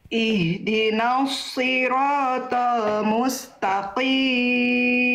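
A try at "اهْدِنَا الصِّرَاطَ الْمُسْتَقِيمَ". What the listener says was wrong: Oke, tapi nunnya jangan sampai ke bawah tebal. Nun itu huruf tipis, huruf tebal Bunda. Huruf nun itu huruf tebal, huruf tipis. Huruf tipis, jangan sampai ke bawah nos. ihdinas ya, tipiskan naknya.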